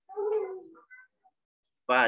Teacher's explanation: Perut bibir ketemu ujung gigi seri atas, huruf fa.